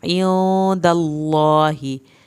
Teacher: अल्लाह के नाम को पुर करके पढ़ना है, मुंह भर के पढ़ना है